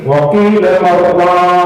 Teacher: masuk nun mati ketemu ra tapi tidak berdengung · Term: idgham bila ghunnah